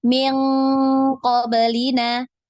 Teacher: nun sukun atau tanwin yang ketemu dengan Q atau Kaf itu dia bunyinya ng ng